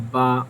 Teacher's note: دونوں ہونٹوں کنارے جب آپس میں ملتے ہیں تب جا کر پھر کیا ہوتی ہے, با کی ادائیگی ہوتی ہے